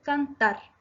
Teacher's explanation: Cantar se acentúa en la última sílaba tar, por lo tanto es aguda.